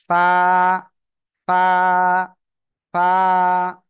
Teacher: নিচের ঠোঁটের পেট, সামনের উপরের দুই দাঁতের আগায় লাগাবেন, লাগিয়ে উচ্চারণ করবেন।